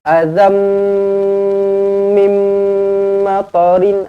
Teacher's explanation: nampak mim sabdu terus rapatkan bibir je.